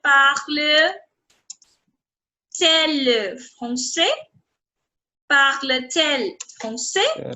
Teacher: I explained that if you are doing an inversion, if you're doing inversion in the question, and if your subject and if your verb are clashing with the vowel, two vowels coming together, in that case, Okay. you're going to merge, you're going to bring this T in between.